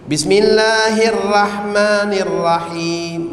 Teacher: ro yang dibaca dengan tebal pada kalimah ar-rahman ro dibaca tebal arrahim dibaca tebal tak boleh baca nipis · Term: ra dibaca tebal